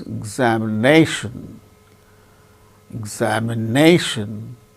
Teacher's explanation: fourth syllable gains primary stress more importance another word also another syllable also gains little bit less importance